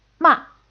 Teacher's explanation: It's like if our plane is going to do a crash landing, it quickly goes from a high altitude down to the ground, and your voice does the same thing. It starts off high and then quickly falls and fades. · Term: fourth tone